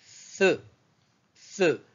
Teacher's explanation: se prononce au niveau de la pointe de la langue qui vient s'intercaler entre les incisives centrales et latérales supérieures et inférieures. C'est l'équivalent de th de l'anglais, tel que dans les mots thanks, thief, three, three.